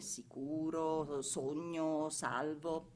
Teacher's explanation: La S ha pronuncia aspra in principio di una parola seguita da una vocale